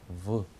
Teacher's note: 소리는 V 합니다. 그러니까 잘 보면 아랫니로 윗입술을 살짝 건드리면서 나는 소리입니다. 그래서 V 이렇게 나는 거죠.